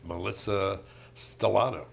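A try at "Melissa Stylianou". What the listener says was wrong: No, it wasn't. You skipped a syllable. The third one, Stylianu. No, you skipped the second one.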